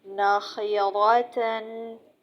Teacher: لام کی جگہ سے لیکن ایک داڑھ کم ہو کر جب اوپر والے 3 دانتوں کے مسوڑوں سے لگے تو اس سے نون ادا ہوتا ہے